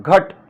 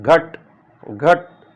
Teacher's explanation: इसमें जो अ है इस पर ज्यादा बल पड़ रहा है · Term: ध्वनि बलाघात